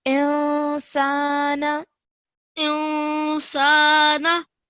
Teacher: when you're joining the alif to the noon, 2-second partial nasal sound